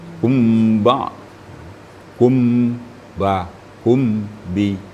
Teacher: ditekan bibir kita apabila mim mati bertemu ba, kerana ba itu sifatnya tidak terlalu menekan, agak tipis.